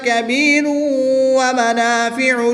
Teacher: را کے اوپر 2 پیش کی تنوین ہے تو تنوین کے بعد واو حرف یرملون میں سے ہے تو یہاں پر ادغام مع الغنہ ہوگا، غنہ کر کے پڑھیں گے